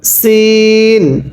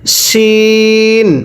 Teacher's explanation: সিনটা চিকন করে শিনটা মোটা করে পড়ুন।